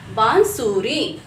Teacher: अनुनासिक का उच्चारण नाक और गले दोनों से किया जाता है